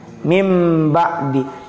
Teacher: menukar bunyi n menjadi Bunyi M